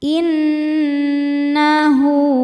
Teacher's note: Im innahu nun tasdidnya dihukumi dhunah musyaddadah karena nun bertasydid. Cara bacanya berdengung. Tahan dengungannya kurang lebih dua harakat.